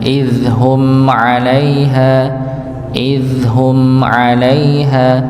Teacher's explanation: Jadi tetap ada ya, tetap ada ditahan sedikit pada mimnya dan didengungkan. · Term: sifat dengung